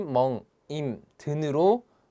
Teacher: 다 비음으로 변했다라는 특징이 있죠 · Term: 비음화